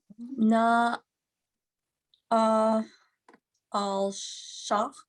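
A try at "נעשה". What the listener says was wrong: You're adding a little bit of sound there. Na asa.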